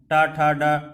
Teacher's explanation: इसके बाद देखते हैं टा वर्ग का उच्चारण कहाँ से होता है। टा वर्ग का उच्चारण देखिए मूर्धा से होता है, जो कि दंत और तालु के बीच का स्थान है। टा ठा डा जब आप बोलते हैं तो आप स्वयं बोल के देखिए, ये जो मूर्धा का स्थान है, यहाँ से ही टा वर्ग का उच्चारण किया जाता है, ठीक।